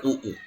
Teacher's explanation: ಉನ್ನತ ಪಶ್ಚ ನಾಲಿಗೆ ಮೇಲೆ ಹೋಗಿರಬೇಕು, ನಾಲಿಗೆಯ ಹಿಂಭಾಗದಿಂದ ಅಕ್ಷರಗಳು ಹುಟ್ಟಬೇಕು.